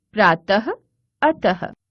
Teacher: इसका उच्चारण हल्के ह की तरह होता है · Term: विसर्ग